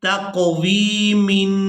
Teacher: اب یہاں تنوین پر ہم اخفا کریں گے، آواز کو ناک میں چھپا کر ادا کریں گے۔ نون ساکن اور تنوین پر جب اخفا کیا جاتا ہے تو آواز کو ناک میں چھپا کر رکھا جاتا ہے کچھ دیر کے لیے، تو یہاں تنوین پر اخفا کریں گے تقویمن۔